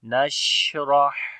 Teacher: ہا کے اندر بھی صفت ہمس آئے گی، سانس جاری ہوگا، اور ہا کو گلے کے درمیان والے حصے سے پڑھیں گے